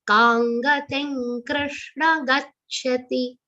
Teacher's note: all the three anuswars in this two charan will be pronounced like nga